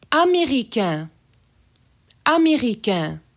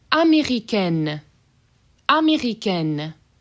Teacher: So nasally N on américain. Américaine, you really hear that N there.